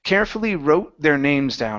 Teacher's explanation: I'm almost pausing just a touch right before I get to the th